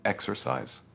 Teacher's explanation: Stress the first syllable, exercise